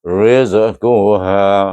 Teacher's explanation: zai ni bukan zal makna lidah tak perlu keluar duduk dia gigi kacit bawah aje zai tengah-tengah lagi kcit bawah